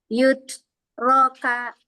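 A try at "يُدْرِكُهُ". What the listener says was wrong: jangan ka, jangan ada hamzah,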